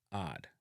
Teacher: So hard would be hard, and some Jamaicans eliminate the H sound altogether and pronounce this hard.